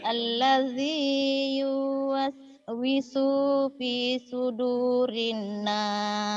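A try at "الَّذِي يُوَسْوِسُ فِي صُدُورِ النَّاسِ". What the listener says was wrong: Tuh udah pinter, tinggal jangan dipanjangin aja nih ya. Alladzi yuwaswisu fi sudurin nas.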